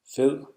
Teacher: when you make the Danish soft D sound, the tip of your tongue touches the back of your lower teeth.